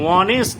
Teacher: অনেস্ট H দিয়ে শুরু হয়েছে, বাট এইচটা উচ্চারণ হয় না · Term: সাইলেন্ট এইচ